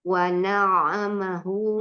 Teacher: Ainnya mengalir. Kan dia ada tasdid.